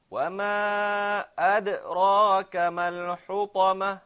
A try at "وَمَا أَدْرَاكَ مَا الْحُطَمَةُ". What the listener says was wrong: Okay, there isn't a pause at the qalqala.